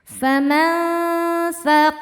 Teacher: Karena nun sukun bertemu tsa. Cara bacanya nun disamarkan ke tsa disertai dengung. Dengung dan samarnya sama besar. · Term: ikhfa hakiki, ikhfa hakiki awsat